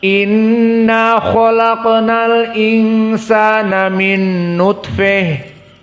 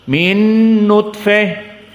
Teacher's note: ta marbutah menjadi ha atnit dan di imalah alkubro MIN nutfeh Adapun jika disambung kembali hukumnya kepada ta bukan Ha